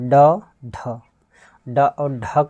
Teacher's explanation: ड और ढ का उच्चारण करेंगे तो आप देखेंगे कि इसमें जीभ तेज़ी से ऊपर जाती है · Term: उत्क्षिप्त व्यंजन